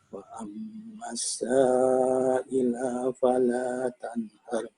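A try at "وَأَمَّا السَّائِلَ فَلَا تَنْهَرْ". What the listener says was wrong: Wa ammas sa'ila fala pendek lah.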